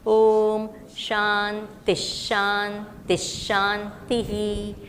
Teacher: The last Visarga we say is Ihi.